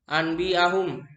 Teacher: Bacaan dikatakan iklab apabila nun mati atau tanwin bertemu dengan huruf ba. Apabila terjadi bacaan iklab, maka nun mati atau tanwin itu harus dibaca mim.